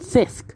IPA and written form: θisk (thick)